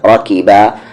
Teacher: را پہ زبر را، کاف پر زیر کی، راکی، با کے ساتھ الف با، راکی با۔ را کو ہیوی کریں گے کیونکہ اس پہ زبر ہے، اس کی آواز اوپر جا رہی ہے